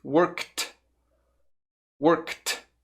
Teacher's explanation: Perceba o som do K primeiro, work. E aí só coloque o som do T, worked. Worked. Eu estou exagerando um pouco, mas para você perceber bem.